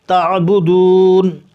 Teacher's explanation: عین کو حلق سے ادا کیا جائے گا